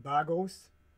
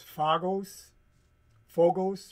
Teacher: a B can also morph into a labial dental F expressed as a PH. We find also the same, you know, PH could morph into an F, okay?